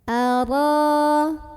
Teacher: Karena ra ada barisnya dan barisnya itu di atas, fathah. Maka cara membunyikan ra ini ditebalkan. Pangkal lidah kita dinaikkan. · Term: tafkhim